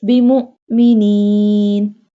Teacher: It is sakina. So we apply sudden break here to pronounce Hamza sakina.